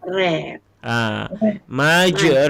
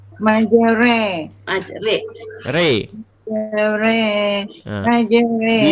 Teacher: Bacaan dimiringkan di antara baris atas dan baris bawah. Di antara baris atas dan bawah kita ambil tengah. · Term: imalah